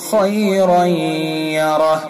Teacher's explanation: خیرا یرہ، را کے اوپر 2 زبر کی تنوین ہے، اور 2 زبر کی تنوین کے بعد یوم ان کے 4 حرفوں میں سے یا ہے، تو اس کے اندر ادغام ہوگا، ادغام ناقص یعنی بالغنہ، غنہ کریں گے. خیرا یرہ، اور را کو پر کریں گے.